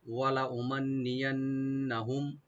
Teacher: এখানে মিম সাকিন এজাহার হবে, আর নুন মুসাদ্দাদ গুলো গুন্না ওয়াজিব হবে। লামে কোনো টান হবে না, ওয়ালা এরকম না।